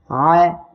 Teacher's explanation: আইন অক্ষরটা উচ্চারণের সময় গলাটা চেপে বাতাস বন্ধ করে আপনারা উচ্চারণ করবেন